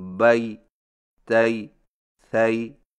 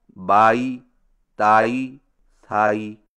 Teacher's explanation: یائلین کے ماں قبل کے زبر کو الف کی طرف میلان نہ کریں، مثلا بئی تئی ثئی کو یوں پڑھنا بائی تائی تھائی، یہ نہایت غلط طریقہ ہے۔